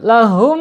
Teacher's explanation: ketika ada mim sukun ketemu dengan mim ya, ini bacaannya idgham mislen atau mim mislen atau mim mimi ya, harus dilebur ke mim yang kedua. Lahum, tahan dulu 2 harokat.